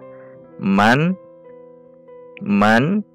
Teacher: Huruf nun ketika sukun itu memiliki sifat baina rakhawah wa syiddah, jadi tidak tertahan dan tidak berhembus, jadi di tengah-tengah. Man tidak boleh juga dibaca mat, man tidak, namun di tengah-tengah. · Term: nun sukun